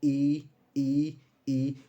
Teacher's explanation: तो जीभ हमारी आगे का जो पार्ट है वो यूज हो रहा है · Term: अग्र स्वर